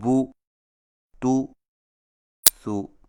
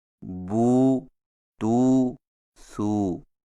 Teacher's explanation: سامعین کرام، آپ پڑھ چکے ہیں کہ سیدھی پیش اور الٹی پیش دونوں حرف کے اوپر ہوتی ہیں، لیکن دونوں میں فرق یہ ہے کہ سیدھی پیش کو ہونٹوں کو گول کر کے بغیر کھینچے اور جھٹکا دیے پڑھا جاتا ہے، جیسے بو، تو، سو، اور الٹی پیش کو ہونٹوں کو گول کر کے تھوڑا سا کھینچ کر پڑھا جاتا ہے